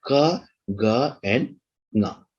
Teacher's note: For velar sounds, the velum or the soft palate is the place of articulation. The back of the tongue approximates to the soft palate.